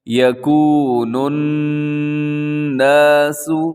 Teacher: یہاں نون مشدد ہے تو اپنے آواز کو ناک میں رکھنا ہے، تھوڑا غنہ کرنا ہے۔